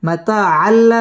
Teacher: লাম ইদগামে বেলা গুন্নার হরফ এখানে গুন্না ছাড়া মিলিয়ে পড়তে হবে